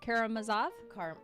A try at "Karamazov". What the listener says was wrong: You put the wrong emphasis on the wrong syllable, but it's totally fine.